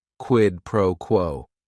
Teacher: Each word is only one syllable. And if you're saying it together, the stress is kind of on that first word and that last word